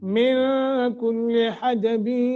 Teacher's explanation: یہاں اخفا کریں گے، نون ساکن کے بعد کاف ہے